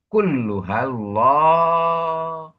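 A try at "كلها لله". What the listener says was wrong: Kulluha lillahi. Kalau ada hamzah asal baru Allah, kalau tidak ada lillah.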